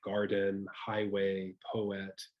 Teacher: And just to give you all a brief overview of that, a trochaic meter is composed of trochees. So that's a stressed syllable followed by an unstressed syllable. Very common English words would include garden, highway, poet.